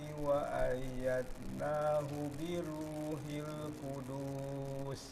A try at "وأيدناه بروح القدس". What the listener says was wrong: Biruhil Qudus. Nah, itu tidak panjang. وأيد ada qalqalah.